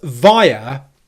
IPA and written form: ˈvaɪə (via)